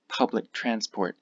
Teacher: again we have the k sound disappear